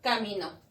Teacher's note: Es una aguda, tiene la mayor fuerza de voz en la última sílaba